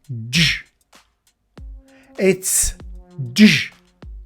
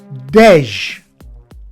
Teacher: It is not dej. We make no sound between da and j. It's j. Similarly, t, first sound.